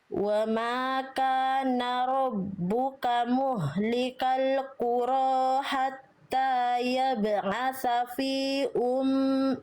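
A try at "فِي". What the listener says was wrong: Fi-nya panjangin. Fi ada alisnya.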